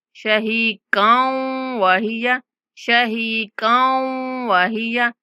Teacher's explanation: ہا کے بعد یا مدہ ہے، ہا کو 1 سیکنڈ تک لمبا کرنا ہے